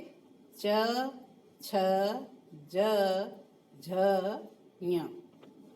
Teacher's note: च वर्ग जो होता है वो तालु से उच्चारित होता है, इसलिए उसे क्या कहते हैं, तालव्य ध्वनियां कहते हैं।